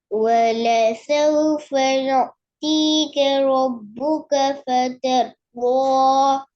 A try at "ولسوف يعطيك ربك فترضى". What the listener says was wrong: يعطيه தான் வருது يعطيك يعطيك வாய் ஃபுல்லா வருது இல்ல வாய் ஃபுல்லா வரணும் ولسوف يعطيك يعطيك வாய் ஃபுல்லா வரணும் யுதி என்றால் பிழை. யுதி என்றால் பிழை. தீ என்று வரக்கூடாது. யுஅ்தீக யுஅ்தீக தா தீ. வாய் ஃபுல்லா சொல்லுங்க. வாய் ஃபுல்லா உச்சரிங்க. யுஅ்தீக.